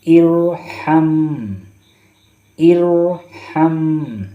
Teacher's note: یہ حمزہ جو ہے حمزۃ الوصل ہے، اس لیے را کو موٹا کر کے پڑھیں گے، کیونکہ پچھلے حرف سے جب ملا کر پڑھتے ہیں تو حمزہ لکھنے کی صورت میں رہتا ہے اور پڑھنے کی صورت میں اس کو نہیں پڑھا جاتا ہے، اس کو چھوڑ دیا جاتا ہے۔